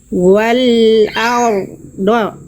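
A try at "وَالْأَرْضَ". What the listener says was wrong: Nah, ro-nya agak samar itu. Ya, getaran ro-nya, getarannya diperjelas lagi. Ya, tidak boleh berlebihan memang huruf ro, tapi gak boleh samar getarannya. Wal tuh ada getaran jelas. Wal ardo.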